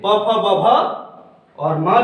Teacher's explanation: प वर्ग का और उ का उच्चारण स्थान है ओष्ठ